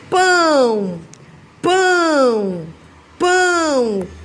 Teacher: Em pão, pessoal, o O também tem som de U